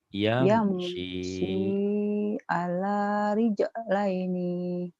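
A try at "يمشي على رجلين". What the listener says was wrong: Rijlaini ayo pendek.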